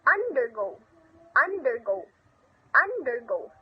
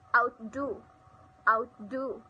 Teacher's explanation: stress the second component